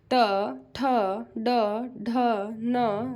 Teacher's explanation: ट वर्ग जो होता है वो हमेशा मूर्धा होता है दोस्तों मूर्धन्य